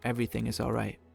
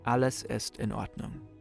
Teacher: German, sometimes there's a mini pause before each individual word.